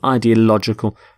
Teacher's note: The stress is on lodge in the middle.